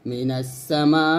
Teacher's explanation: ওয়াকফের সময় দুই জবরকে আলিফে আলিফ মাদ অথবা খারা জবর দ্বারা পরিবর্তন করে অর্থাৎ এক আলিফ টেনে পড়তে হবে